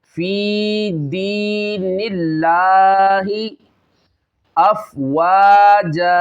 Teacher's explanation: یا ساکن سے پہلے دال کے نیچے زیر آ رہی ہے، یہاں پہ یا مدہ ہو رہا ہے، اس کو بھی ایک الف کی مقدار کھینچنا ہے۔ اور یہاں پہ دیکھیں اس میں جلالت اللہ عز و جل کے لام سے پہلے زیر آ رہی ہے، اس کو باریک پڑھنا ہے، موٹا نہیں کرنا، ہیلدی نہیں کرنا بلکہ باریک پڑھنا ہے۔ · یدخلون فی دین اللہ، فی دین اللہ افواجا، یہاں پہ دیکھیں یا مدہ ہے، اس کو ہے فی میں ایک الف کے برابر کھینچنا ہے کیونکہ یا ساکن ہے، اس سے پہلے زیر آ رہی ہے، اس کو ایک الف کھینچنا ہے۔